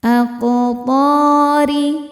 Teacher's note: huruf ro dibaca secara tarqik karena berharakat kasrah dibacanya tipis.